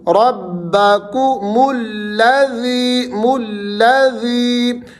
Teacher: ربکو، کو اس کو نہیں کرنا، کو، ربکم الذی، یا مدہ آ گئی تو یہاں پر آپ نے ذی کو کھینچنا ہے